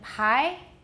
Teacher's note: bi has no aspiration it's not really voiced either by but pi is of course voiceless but it has aspiration that's what makes the biggest difference between buy and pie in